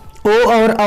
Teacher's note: कंठोष्ठम, कंठ और ओष्ठ दोनों से ही